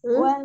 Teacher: Jadi lamnya jangan di wal wal jangan dipantul. Nah, walnya itu dari antara tepi lidah nih. Wal.